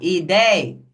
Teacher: Porque a sílaba tônica de ideia é a sílaba dei.